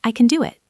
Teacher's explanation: Can is a function word, so it's unstressed. The vowel disappears into a schwa.